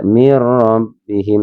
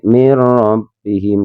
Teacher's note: Karena ini ada nun sukun bertemu dengan huruf ya. Ya, dibacanya memang memasukkan tapi dengan tidak mendengung tanpa mendengung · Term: idgham bila